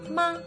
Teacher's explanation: the first tone is high and light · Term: 1st tone